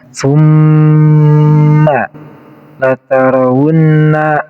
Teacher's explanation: Dan mim di sini yang bertasydid namanya huruf gunnah. Cara bacanya harus ditekan dari mimnya 2 harokat dan kemudian menggunakan dengung.